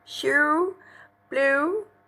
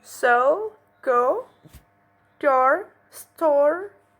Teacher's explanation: round vowels, produced by rounding the lips.